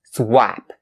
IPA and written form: swæp (swap)